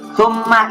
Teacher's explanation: itu gunah itu berdengung 2 ketukan